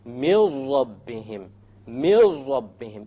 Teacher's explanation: So you don't say min rabbihim, you drop it. You drop the noon and you merge the meme with the ra. And you say, mil rabbihim, mil rabbihim, immediately. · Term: idgham without ghunna